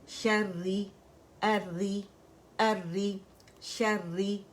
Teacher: را مشدد جو ہے وہ کسرہ کے ساتھ ہے تو دونوں باریک پڑی جائیں گی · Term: را باریک